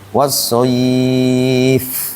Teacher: itu fa-nya harus mengalir. Wassoif, ya, kayak kita niup. Bukan C dia. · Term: huruf hamas